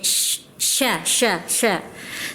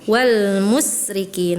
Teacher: Kemudian huruf tadi Ibu mendengarnya ketika di surah Al-Bayyinah, ketika mengucapkan kalimat wal musyrikin terdengarnya seperti sin, jadi kurang tebal, kurang. Shin itu kan punya sifat tapashi, dia banyak udaranya di mulut. Sya. Tadi terdengarnya wal musrikin, harusnya wal musyrikin ya.